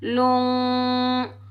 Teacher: लाम के ऊपर पेश है, लाम को हम नून साकिन के साथ मिलाएंगे और नून साकिन पर इख्फा होगा, ठीक है। जब हम इख्फा करेंगे तो नाक में आवाज़ पैदा करेंगे